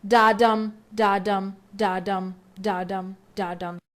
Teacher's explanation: each line has 10 syllables divided into five pairs unstressed followed by stressed. So it sounds like da da dam da da dam da five times means penta.